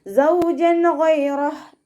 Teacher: തെൻവീനിലുള്ള നൂനിൻ്റെ സൗണ്ടിനെ വ്യക്തമാക്കി മണിക്കാതെ ഓതി കൊടുക്കുക. ഇദ്ഹാർ ചെയ്യുക കേട്ടോ, വ്യക്തമാക്കി മണിക്കാതെ ഓതുക.